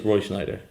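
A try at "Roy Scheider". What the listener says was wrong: It's not. There's no N in it. It's Schneider.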